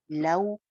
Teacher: वाओ लीन है, जैसे पाउच बोलते हैं इंग्लिश में हम पाउ